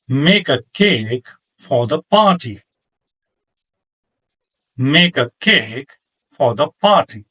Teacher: I stressed make, cake, and party, and left a, for, and the unstressed